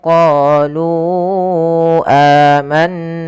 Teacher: pada lafal qolu lunya kita panjangkan empat harakat teman-teman karena di sini ada bacaan mad jaiz munfasil yang di mana adanya mad thabi'i bertemu dengan hamzah setelahnya.